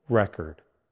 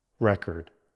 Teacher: First, the noun. Stress on the first syllable, record.